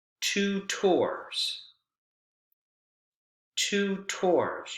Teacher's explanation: this is a compound word stress is on both syllables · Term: double stress